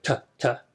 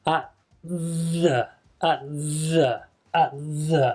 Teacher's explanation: So with the t, because it's very close to the th sound, you actually make the t with your tongue further forward than usual, actually touching behind your top front teeth. And you don't release the t, so normally you go t, t, to make a t sound, but here you don't.